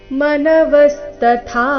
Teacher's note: ಮೊದಲು ಅಲ್ಪ ಪ್ರಾಣ ತ ನಂತರ ಮಹಾಪ್ರಾಣ ಥ ದೀರ್ಘ